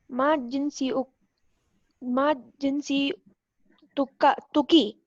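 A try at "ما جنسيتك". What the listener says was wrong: There's a shadda on the ya. So ma jinsiya. So here we have the zabar on the ya. So it is jinsiya, but you have to stop. So it is jinsiya tuka.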